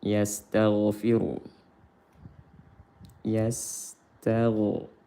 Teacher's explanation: Ra tafkhim karena berharokat dhammah